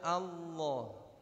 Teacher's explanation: Pada kata Allah tidak ada monyong sama sekali.